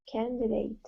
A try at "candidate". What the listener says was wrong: Candidate. Like this. Candidate. Okay, you don't need to say date. It's dit. Candidate. We don't say date because date is not the stressed syllable. So we don't actually say the A.